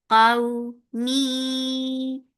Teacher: And this is lean, so when you are attaching fatha with wow, here you're making the sound soft. Qaw, mi, idgham with gunna, so keep the sound in your nose for a longer time.